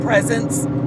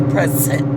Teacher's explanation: There's something more pronounced about it. So his S's are like instead of saying presence, he would say presence, like more drawn out. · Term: slight lisp